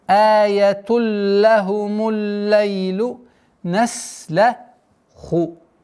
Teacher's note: Аятулля хумуль. С огласовки дамма переходим на удвоенный лям. Аятулля хумуль лейлу наслаху.